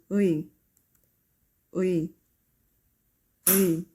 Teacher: make short and quick 으 sound followed by quick 이 sound, which will make 의